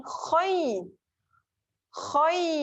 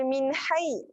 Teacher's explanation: Kha berada di hujung kerongkong. Hujung yang atas ni, dekat dengan pangkal lidah ni. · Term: huruf tebal